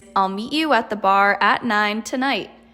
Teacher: Hear how your voice changes from up and down and up throughout this sentence? It's because there's multiple different variants within the sentence, aka topics. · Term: falling rising